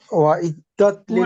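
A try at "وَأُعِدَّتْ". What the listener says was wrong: উইদ্দাত, ওয়াইদ না, ওয়া হইলে ওয়াওয়ের মতো উচ্চারিত হয়। উইদ্দাত, উইদ্দাত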